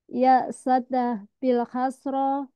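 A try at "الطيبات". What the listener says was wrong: Tidak ada bilnya. Ya syadda kasra. Tayyi. Tayyi.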